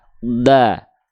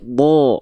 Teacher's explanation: Huruf yang tebal ketika berharokat fathah dia akan terdengar seperti vokal O.